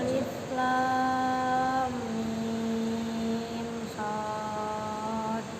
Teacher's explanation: jadi lamnya 6 harokat, kemudian masuk diidghamkan ke mimnya 3 harokat. Mimnya 6 harokat, idharkan ke shad.